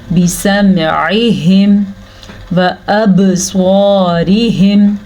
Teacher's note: बिसमइहिम व अबस्वारिहिम, बा के ऊपर कलकला होगा, बा साकिन है तो इसीलिए यहाँ पे झटका देंगे, इस झटके को कलकला कहते हैं। रा बारीक पड़ी जाएगी, रा के नीचे ज़ेर है इसलिए।